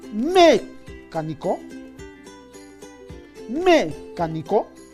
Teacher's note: nosotros le colocamos la mayor fuerza de voz en la ante penúltima sílaba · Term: esdrújula